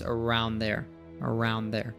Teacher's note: Around there, he actually drops the D sound. This often happens if a word ends in D or T and the next one begins with like D, T, or TH, that will just pronounce the second one.